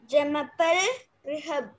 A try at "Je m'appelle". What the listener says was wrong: See, try not to pronounce the sound as J. It is not Jamapel. It is not Jamapel. Jamapel. J.